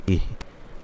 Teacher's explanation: হামজা হচ্ছে হলকের শুরু থেকে, হাও হলকের শুরু থেকে